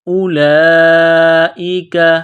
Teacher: یہ لمبی مد ہے، 4 الف کے لمٹ میں کھینچنا ہے